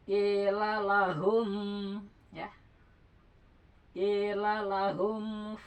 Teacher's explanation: Jadi ee mengucapkan mimnya itu agak ditahan. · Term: ikhfa syafawi